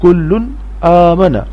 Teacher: کاف لام پیش کل لام دو پیش لن کلن حمزہ کھڑ زبر آ کلن آ. تنوین یعنی دو پیش کے بعد حمزہ ہے اور حمزہ حروف حلقی ہے، اس لیے تنوین کی آواز ناک میں سے نہیں آئے گی. کلن آ مزما کلن آما نون زبنا کلن آمنا.